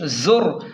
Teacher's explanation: زا کو تیز پڑھیں کیونکہ یہ حروف سیٹی میں سے ہے، زا کو تیز پڑھیں اور را کو موٹا پڑھیں کیونکہ را ساکن سے پہلے پیش ہے۔